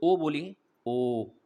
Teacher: ओ बोल रहे हैं तो कंठ पे भी जा रहा है और ओष्ठ पे भी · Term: कंठोष्ठ ध्वनि